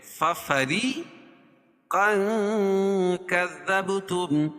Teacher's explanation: ففری یا ساکن سے پہلے زیر ہو تو یا مدہ، اور را کے نیچے زیر ہے تو را خود باریک پڑی جائے گی